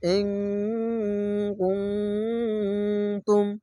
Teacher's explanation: ইকফা গুন্না বাংলা অনাস্কার মতো গুনগুন করে আওয়াজ হবে